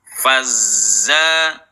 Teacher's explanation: huruf Zain nya atau huruf z-nya ng fazza jangan fassa nah terkadang Za juga bisa jadi dibaca sa